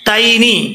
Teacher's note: आपने खास ख्याल रखना है कि ता को मोटा नहीं पढ़ना ता का मखर आपको बता चुका हूं के जुबान की नोक जो है वो ऊपर वाले दांतों के जड़ों से लगे ठीक है तनी यहां प यालीन है इसको लंबा नहीं करेंगे